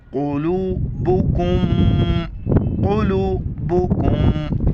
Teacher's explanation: میم ساکن ہے، ناک میں آواز پیدا کریں گے